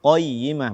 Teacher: menyempurnakan ketebalan qaf pada kata qayyimah